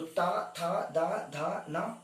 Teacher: आप इसमें दांत का इस्तेमाल कर रहे हो, बिना दांत के इस्तेमाल के इसे बोलना मुश्किल है सरकार। तो कंठ तालु मूर्धन्य से बोला, मूर्धा से बोला जाता है, इसे मूर्धा से बोला गया जो शब्द है वो मूर्धन्य है। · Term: दंत्य